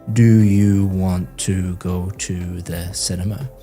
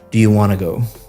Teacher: Want to go sounds like one word, want to go, because you're connecting all the speech up. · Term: connected speech